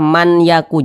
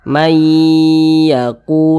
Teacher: jadi dibaca mayyaku mayyaku jangan dibaca manaku jangan kemudian kita panjangkan kita tahan suaranya kita panjangkan sejenak kita gunahkan